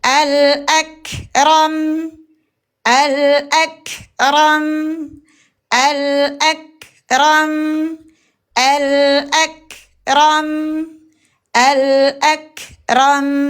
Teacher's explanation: Tutup bibir kita. Karena merapatkan kedua bibir. Mukammil kita keluarkan di hidung. Mukammil keluarkan dari hidung. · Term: huruf mim